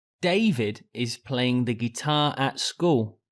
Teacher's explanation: as the question was who I make David the stressed word in the sentence as that is the most important word for answering the question